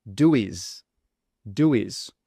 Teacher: When it comes to do is, we would add a W sound in between the two words so it's easier to pronounce